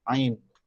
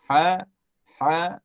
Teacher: tempat keluar dia sama punca dia tu sama tapi sifatnya tak Samalah